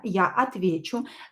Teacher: The stress is on я.